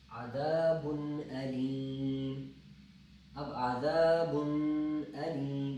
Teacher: اب جب تنوین کے بعد حمزہ آ رہی ہے تو ہم یہاں غنہ نہیں کریں گے بلکہ پڑھیں گے عذاب علیم۔